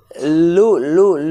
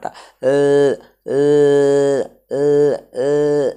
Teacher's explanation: మీ నాలుక ముందు వరుసులో ఉన్నటువంటి దంతాలను బలంగా వచ్చి తాకుతుంది. నాలుక ముందు వరుసలో వచ్చినటువంటి దంతాలని తాకుతూ ఇట్లా ముందుకు నెట్టుతుందన్నమాట ల్ అదిగో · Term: దంత్యాలు